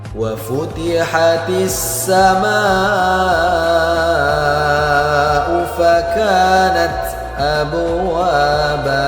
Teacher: Huruf ta ketika berharakat sukun maka harus kedengaran desisnya. itu maknanya ada udara yang mengalir karena huruf ta [musik] ini punya sifat yang namanya hamas.